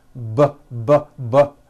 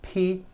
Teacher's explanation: the only difference is my vocal cords are either vibrating or they're not vibrating